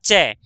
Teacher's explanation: च बोलते से हमारी जीभ दांतों से ठीक थोड़ा सा ऊपर छूती है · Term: तालू